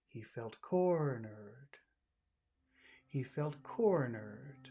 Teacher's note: the most important word in that phrase is corner so it's really important to focus on the accented syllable he felt cor nerd he felt becomes very small he felt